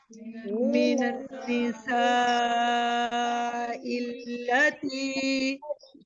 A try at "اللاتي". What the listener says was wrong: खड़ी जबर है लाम के ऊपर, तो आप यहाँ पर स्ट्रेच करेंगे, 2 हरकत तक मद होगी यहाँ पर। इल्लाती